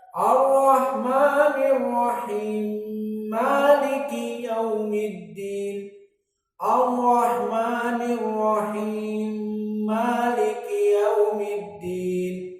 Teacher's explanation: dia membaca dengan sambung, diidgham antara Ar-Rahimi dengan Maliki